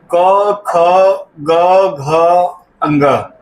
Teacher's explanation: इन सबका उच्चारण कंठ से होता है।